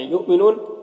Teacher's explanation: یہاں پر حمزہ ساکنہ ہے، واو کی شکل میں جھٹکا لگے گا،